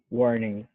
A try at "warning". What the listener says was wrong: That sounded good.